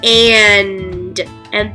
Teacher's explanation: there's two consonants put together at the end n and d and they make two separate sounds so and i can hear the n and i can hear